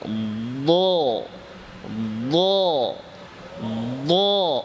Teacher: উচ্চারণের সময় আওয়াজের রুখ, আওয়াজের গতি ঊর্ধ্বমুখী থাকবে, জিহ্বার গোড়া উপরের তালুর দিকে উঠবে। ল ল ল উপরের দিকে উঠবে। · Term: ইস্তিআলা